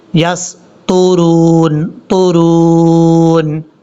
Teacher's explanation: یہ طا حروف مستعلیہ میں سے ہے، پر پڑھا جائے گا۔ یسطرون، طرون، را کو جب واو سے کنیکٹ کریں گے تو واو کو لمبا کیا جائے گا کیونکہ یہ واو مدہ ہے۔